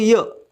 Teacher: यचा उच्चार करण्याच्या आधी ई या स्वराचा उच्चार होतो. म्हणजे आपण उच्चार करताना इ असा उच्चार करतो. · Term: अर्धस्वर